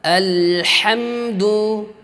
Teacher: mim bertasydid berjumpa dengan dal, ya, izhar syafawi, jangan sampai didengungkan, jangan sampai disamarkan. Harus dibaca dengan izhar jelas.